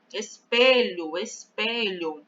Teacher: em espelho a sílaba pronunciada com mais força é o pé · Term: sílaba tônica, sílaba forte